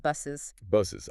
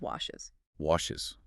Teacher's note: A very short I sound plus the Z. And like red, this adds an extra syllable. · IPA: /ɪz/